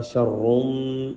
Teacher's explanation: را موٹا بھی ہے اور را پہ غنہ بھی ہے